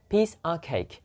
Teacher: of preposition becomes schwa